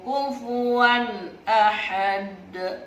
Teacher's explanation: izhar artinya jelas halqi artinya tenggorokan karena huruf hamzah ada di tenggorokan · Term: izhar halqi